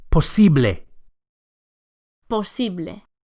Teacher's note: the final E sound, posible, is a pure vowel, not A. Don't say posible, but posible.